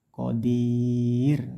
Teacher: dirnya panjangkan 6 harokat atau 3 alif, ini namanya mad arid disukun. Hati-hati roknya rok tipis, qadir.